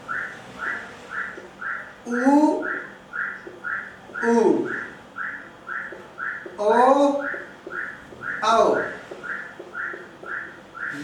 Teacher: वे स्वर जिनका उच्चारण करते समय हमारे ओंठ वृत्त की आकृति में मुड़ जाते हैं या वृत्त की आकृति धारण कर लेते हैं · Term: वृत्तमुखी